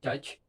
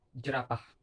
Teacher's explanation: The air in your mouth should stop before it is released. It is like combining a D and Ch. Your vocal cords should vibrate.